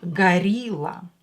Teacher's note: in russian o will be pronounced as a because it's not stressed